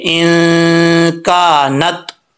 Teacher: یہاں نون کے اوپر جزم ہے تو نون ساکن ہے، ساکن کے بعد حروف اخفا ہے، تو غنہ کریں گے